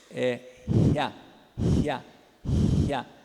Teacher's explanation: Que seria o semivocóide palatal surdo, seria assim, ya.